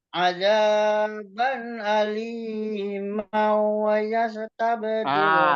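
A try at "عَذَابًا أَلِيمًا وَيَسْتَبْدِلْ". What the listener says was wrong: Maunya itu ingat idgham bi gunnah. Ini tadi kecepatan, Pak. Iya, di wawunya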